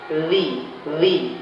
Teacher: Tempat keluarnya ujung lidah dengan ujung gigi seri atas dan gigi seri bawah. Jadi lidahnya seperti tergigit. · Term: huruf dza